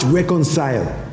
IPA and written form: ˈrekənsaɪl (Reconcile)